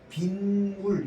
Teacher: 이제 C는 명사 B와 물이 결합한 합성어이고 B와 물은 모두 고유어이며 자 앞말 B가 모음으로 끝나고 뒷말 물의 첫소리 미음 앞에서 니은 소리가 덧남으로 사이시옷을 표기해야 된다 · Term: 니은 소리가 덧나게